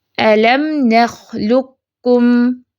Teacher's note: قاف کی آواز نہیں آئے گی، صرف کاف کی آئے گی جو لائٹ کاف ہے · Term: ادغام متقاربین تام